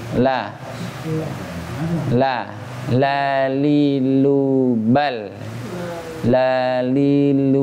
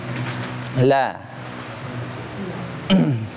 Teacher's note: ujung lidahnya terasa ya, menyentuh langit-langit depan.